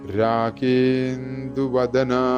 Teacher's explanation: രാഗേ എന്ന് നീട്ടിക്കഴിഞ്ഞാൽ ഇന്ദു എന്നത് കറക്റ്റായിട്ട് വരും. അപ്പോൾ രാഗേന്ദു ഈ നിന്ന് ചെറുതായിട്ടൊന്ന് കേൾക്കാൻ ശ്രമിച്ചാൽ വളരെ നന്നായി.